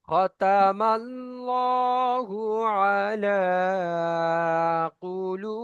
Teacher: খতামাল লহু পড়বো, খতামাল লাহু কেউ পড়বো না, কারণ আল্লাহ শব্দের আগে জাবার এসছে মিমের উপরে, তাই এটা পুর হবে।